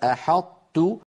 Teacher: هنا أدغمنا حرف القلقلة وهو الطاء في مجانسه وهو التاء